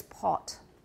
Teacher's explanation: in british english they do have a lower back somewhat rounded vowel